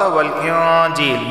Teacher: انزل التوراۃ والانجیل، یہاں نون ساکن کے بعد جیم آیا ہے اور جیم حروف اخفا میں سے ہے تو اخفا والا غنہ ہوگا، یعنی زبان کے نوک اوپر کے تالو سے نہیں لگے گی۔ یا ساکن سے پہلے زیر ہے تو اسے ایک الف کے برابر بھی کھینچ کر پڑھا جائے گا۔